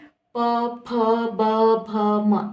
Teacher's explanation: आप देख रहे दोनों लिप्स, दोनों ओठ जो है वो मेरे टच हो रहे हैं।